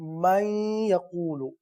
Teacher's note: تو یہ حروف یرملون اگر نون ساکن کے بعد آ جائے تو وہاں پر ادغام کا قاعدہ ہوتا ہے۔ ادغام کا مطلب ہوتا ہے ملانا، صحیح ہے؟ نون کو یا میں مدغم کرنا